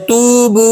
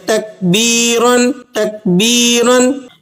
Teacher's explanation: इन सब मिसालों में ता की अदायगी नरम सीधी और बगैर दबाव के हो रही है।